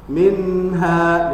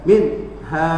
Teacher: nun sukun ketemu dengan ha, itu dibaca jelas, ya, tidak digentakkan. Kalau digentakkan itu akan nanti akan masuk ke sifatul huruf syiddah. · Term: izhar hakiki